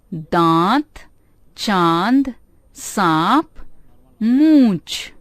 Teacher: इसका उच्चारण नाक और मुंह से किया जाता है। चंद्र बिंदु वाले कुछ शब्द हैं दांत, चांद, सांप, मूंछ।